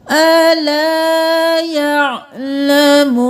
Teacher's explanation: عین کی آواز آنی چاہیے حمزہ کی آواز نہیں آنی چاہیے